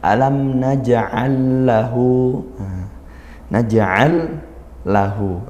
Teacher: lam sukun bertemu lam ya, langsung masuk ke lam yang kedua. Alam naj'al lahu, naj'al lahu, berikutnya ada kalimat lahu, maka idgham mutamathilain masuk pada huruf berikutnya karena hurufnya sama.